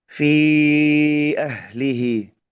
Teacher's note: ada pertemuan bunyi panjang di kata fi bertemu dengan hamzah di ahlihi